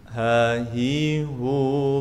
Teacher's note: Thumma li aqsal halqi hamzun ha'u, thumma li wasṭihi fa'ainun ha'u. Kemudian yang paling ujung dari tenggorokan, paling bawah sini adalah makhrajnya hamzah dan ha.